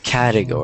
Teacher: So like the stress is on the beginning.